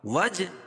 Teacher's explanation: وج جیم پر قلقلہ، اس پر قلقلہ ہوگا کیونکہ حروف قلقلہ کے 5 حرفوں میں سے ہے